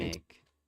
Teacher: Now the third syllable is stressed.